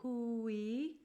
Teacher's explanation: It's a pure oo and a pure e vowel with an H and a W. So hooey. All right, and we're going to use that W to glide in between those vowels.